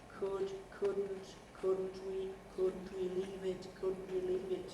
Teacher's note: on the first syllable of couldn't we are to start a high pitch and continue that high pitch through the head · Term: high level head